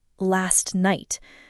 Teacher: the t in last is often barely pronounced, almost silent, blending into the n of night